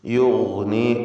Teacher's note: ഗൈനിന് തഫ്ഖീം കൊടുക്കുക. ഇസ്തിഅലാഇൻ്റെ ഹർഫാണ്.